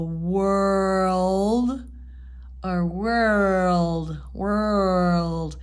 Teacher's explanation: I don't really curl my tongue my R very very much I tend to kind of pull it back more than the curl